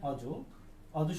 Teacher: বিবৃত উচ্চারণের ক্ষেত্রে ঠোঁট কি হবে, কিছুটা প্রসারিত হবে